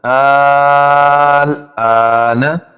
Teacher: اس کو ہم 5 الف کے برابر کھینچ کر پڑھیں گے